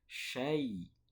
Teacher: madlin ya namanya hukumnya madlin ya sukun sebelumnya fathah itu membacanya bukan e tapi i